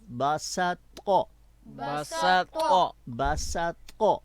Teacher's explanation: سین جو ہے اس پر آپ آواز کو پر نہیں کریں گے، بلکہ پوری منہ کو کھول کر باریک پڑھیں گے